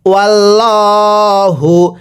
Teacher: এটাকে যদি ওয়াল্লাহু পড়ি তাহলে আর পড়াটা শুদ্ধ হবে না কারণ আল্লাহ শব্দের পূর্বে জবর থাকলে আল্লাহ শব্দটিকে ল করে অর্থাৎ মোটা করে পড়তে হয়